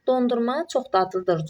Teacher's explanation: Dondurma çox dadlıdır cümləsində vurğu ma şəkilçisinin üzərinə düşür.